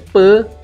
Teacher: Per dekat sini adalah i pepet tau, bukan i taling. Sebab tu pa ni dia duduk sorang-sorang.